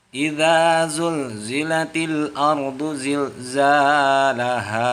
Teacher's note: Za-nya dibaca 2 harokat juga dan ha dibaca panjang 2 harokat juga.